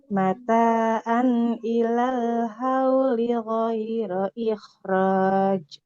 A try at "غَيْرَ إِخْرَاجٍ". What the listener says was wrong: Ikhraj. Nah, huruf jim itu nggak boleh roj, roj. Nah, nggak boleh ada hembusan nafasnya. Ikhraj. nggak boleh nggak memantul.